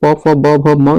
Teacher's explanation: प फ ब भ म व्यंजन होते हैं, ओष्ठ व्यंजन होते हैं